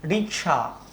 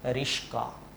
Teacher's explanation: তালব্য স এবং ক পরস্পরের মধ্যে জায়গা বদল করেছে। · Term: ধ্বনি বিপর্যাস